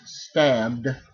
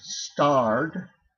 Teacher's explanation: you're going to pronounce that d as a voiced D